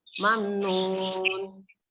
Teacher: Mamnun, dibaca izhar syafafi. izhar syafawi, yaitu dibaca jelas. Karena ada huruf mim sukun bertemu dengan huruf nun.